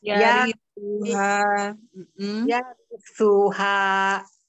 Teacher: bukan su tapi tu yang ujung lidah menempel gigi seri atas